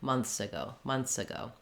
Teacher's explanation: You can hear how, yes, there is a slight difference, but most people won't be able to hear it and won't notice it because the most important thing is that I have my S sound and it's connecting into the next word